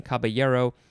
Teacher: I personally prefer the second pronunciation, caballero, because it is a Spanish word, and then when there's the two L's next to each other, they have a ya sound, like a Y, instead of an L